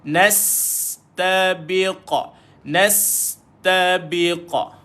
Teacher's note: Nas sin sukun. Nas ada sifat safir. Dia bunyi berdesir.